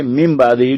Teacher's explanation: نون ساکن کی شکل میں نون نظر آ رہا ہوگا لیکن ہم نون پڑھیں گے نہیں، اس کو میم پڑھیں گے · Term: اقلاب